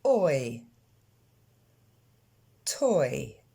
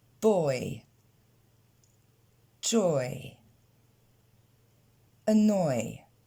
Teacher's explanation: Tout simplement, si on le décompose, on retrouve un peu le O qu'on avait vu dans les voyelles longues et le son I